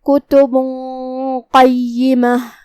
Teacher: قاف حروف الاخفاء میں سے ہے جو کہ اخفاء کا معنی ہے چھپا دینا, تو ہم یہ تنوین کو چھپاتے ہوئے بغیر ظاہر کیے ہوئے لیکن غنہ کے ساتھ یہ حکم کو ادا کریں گے. جو کہ قاف حروف تفخیم میں سے بھی ہے تو ہمیں یہ غنہ کو تفخیم سے ادا کرنا ہے کیونکہ غنہ اپنے اگلے والے حرف کا حکم لیتا ہے, تفخیم ہو یا ترقیق.